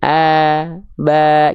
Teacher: Karena ketika dilafalkan vokal A, tidak ada jalur yang menghalangi. Pangkal lidahnya datar, sehingga vokal A-nya keluar murni. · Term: Huruf tipis